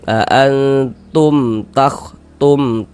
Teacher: Karena dia izhar maka dibaca jelas tidak berdengung. Baca pendek saja ya. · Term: izhar syafawi